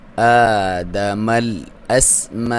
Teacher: کھڑی زبر جو ہوتی ہے اس کی لمبائی بھی ایک الف کے برابر ہوتی ہے ، الف مدہ کے برابر، اور لام پہ آپ نے مل